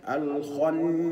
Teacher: وقت الغنه بمقدار حركتين الخنا بعد النون المشدده ياتي حرف الالف وهو الف مد يمد بمقدار حركتين